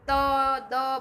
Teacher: પછી એ રીતે દંત્ય છે, ઓષ્ઠ્ય છે, તો જેમ ત દ બોલી તો આપણા જીભ છે દાંતને અડે